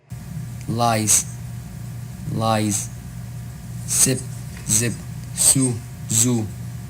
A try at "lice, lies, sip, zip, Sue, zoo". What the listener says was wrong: Okay, so the Z, I think you need to work on that Z a little bit more. Lice, lies. Sip, zip. Sue, zoo. So you can definitely work on that.